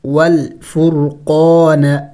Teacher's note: راؤ کو موٹا پڑھیں گے